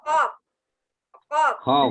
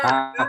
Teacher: Nah, dalam pengucapan huruf qaf itu harus berbeda dengan pengucapan huruf kaf. Huruf qaf terletak di pangkal lidah, lebih dekat pada kerongkongan. Sedangkan huruf kaf itu lebih dekat pada bibir.